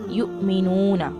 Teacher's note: हमजा और जज़म है, इसको झटके से पढ़ेंगे